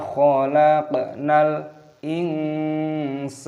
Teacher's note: nun sukun bertemu dengan huruf sin, hukumnya dibaca ikhfa, disamarkan